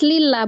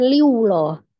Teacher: Tapi sebelumnya berharakat kasr di huruf lam maka dia dibaca tipis lillah bukan lah lillah lanya adalah Mad dibaca Dua harakat awalnya